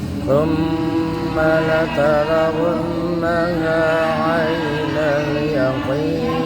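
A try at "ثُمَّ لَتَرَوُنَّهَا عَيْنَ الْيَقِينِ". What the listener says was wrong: Perhatikan mim tasdid di summa sama nun tasdid setelah wa. Wunna itu harus sama ya. Summa wunna. Ayo latihan tahan di situ. Sama-sama nahannya tuh sama-sama 2 ketukan ya. Jangan sampai summa udah bener la tarawunnaha nggak ditahan di situnya.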